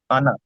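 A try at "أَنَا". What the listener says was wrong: উচ্চারণটি হলে টান হবে না। আলিফ, হ্যাঁ, এই আনা চার জায়গায় টান হবে, বাকি সমস্ত জায়গায় আনা টান হবে না। তো এখানে আনাটি টান না দিয়ে বলবেন ওয়ালা আনা, নুন জাবার না, না, আলিফ মাদ্দাটি হবে না।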